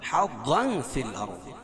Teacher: ضا کو پور پڑھیں گے، کیوں؟ ضا حروف مستعلیہ میں سے ہے · ضا حروف مستعلیہ میں سے ہے اور تنوین کے بعد حروف اخفاء کے 15 حرفوں میں سے فا ہے تو یہ اخفاء حقیقی ہوگا